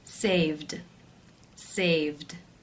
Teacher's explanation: For example, the verb to save. The final sound is the v voiced consonant sound, so the ed will take the d voiced d sound ending.